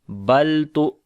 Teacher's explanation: लाम के ऊपर सिफ्ते तवस्सुत करेंगे, ना तो आवाज़ को एकदम बंद कर देंगे और ना ही एकदम जारी करेंगे, दरमियानी पोजीशन होगी